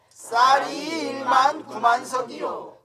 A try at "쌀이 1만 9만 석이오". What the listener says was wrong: 이오 하지 말고 쌀이 1만 9만 석이오